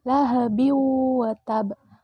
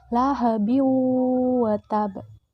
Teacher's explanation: menjadi dua yaitu idgam bigunnah dan idgam bilagunnah idgam bigunnah adalah idgham yang dibaca dengan secara dengung